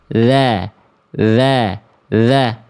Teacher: makhraj huruf dzal dari ujung lidah ketemu ujung gigi seri atas